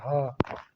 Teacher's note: ल काकल्य वर्ड जिन व्यंजन ध्वनि के उच्चार में मुख गुहा खुली रहती है और वायु बंद कंठ को खोलकर झटके से बाहर निकलती है उसे काकल्य वर्ड कहते हैं। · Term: काकल्य वर्ण